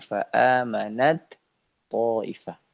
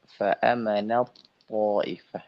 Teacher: Akan tetapi dia di sini adalah idgham. Memasukkan huruf ta ke huruf th.